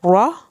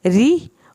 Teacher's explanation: पूरे कुरान में रा के नीचे जब भी ज़ेर आएगी तब रॉ जैसे हमने मोटा पुर पढ़ा, रॉ जो है वो ज़ेर की सूरत में री, पतला रा पढ़ा जाएगा